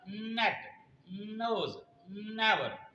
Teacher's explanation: तो एन को जब हम अदा करेंगे तो आप अपनी जबान को ऊपर तालू को लगाएंगे, अपने मुंह की छत को लगाएंगे, वहां पर हवा को रोकेंगे, फिर नाक से निकालेंगे। · आप एन पर हर बार अपनी जबान को तालू से लगाना है